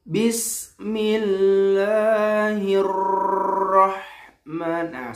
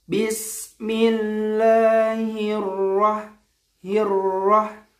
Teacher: terlalu menggetarkan huruf rok misalkan kita ketika membaca huruf ro karena saking semangatnya getarnya itu berlebihan